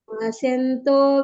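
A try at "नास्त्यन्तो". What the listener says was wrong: ಇಲ್ಲಿ ನಾಸ್ತ್ಯಂತೋ, ಸೌಕೆ ತವತ್ತು ಯವತ್ತಿರೋದ್ರಿಂದ ನಾಸ್ತ್ಯಂತೋ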